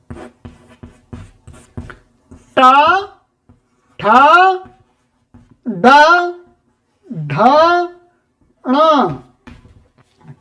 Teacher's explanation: इन वर्णों का उच्चारण का स्थान क्या है? कहते हैं मूर्धन्या अर्थात ये मूर्धा स्थान वाले हैं।